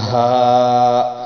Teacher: یہ سینے سے نکلے گا ہا